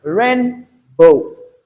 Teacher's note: In rain boot we have the stress on the first syllable or the first word.